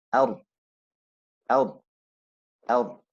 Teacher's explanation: transitioning from the alif to the ra is fast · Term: al-idlaq